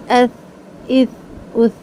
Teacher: زبان کی نوک دانتوں سے باہر نکال کے سا کو پڑھیں گے